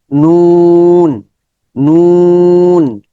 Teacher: নুনের মাখরাজ হচ্ছে জিহ্বার আগা উপরের দাঁতের মাড়ির গোড়ার থেকে একটু উপরে, মাড়ির দাঁতের গোড়ার একটু উপরে লাগবে। নুন, ঠোঁট গোল হয়ে যাবে, নুন।